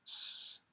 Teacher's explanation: It's unvoiced. You're using the tip of your tongue to make a whistling sound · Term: S consonant